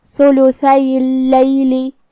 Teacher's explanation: لام پہ تشدید ہے تو ہم 2 حرف کے برابر حرف اللام کو پڑھیں گے · تھا کی ادائیگی زبان کے سر اور اوپر والے دانتوں کے اندرونی کناروں سے ہے